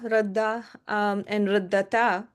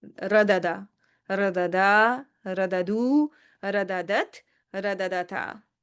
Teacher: instead of keeping the haraka of the two, the first one is going to lose its haraka and get merged into the second one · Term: idgham